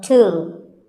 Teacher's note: It's often wrongly pronounced as tomb, but the B is silent and the O is pronounced with an oo sound